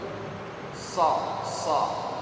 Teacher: Yang penting lidah kita naikkan ke atas, karena termasuk huruf isti'la, naikkan ke atas. So, tidak perlu monyong. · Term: huruf shad